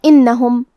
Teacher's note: یہاں حرف النون پہ تشدید ہے، لہذا ہمیں 2 حرف کے برابر نون کو پڑھنا ہے کیونکہ تشدید کی اصلیت 2 حرف ہے.